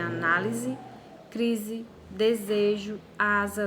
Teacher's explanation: Quando o S aparece no meio das palavras em posição intervocálica, ou seja, quando ele vier entre duas vogais, ele vai assumir a pronúncia de Z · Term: som de Z